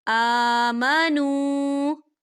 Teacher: آ کھڑی حرکات ہے، تو اسے 2 حرکت کی برابر کھینچیں گے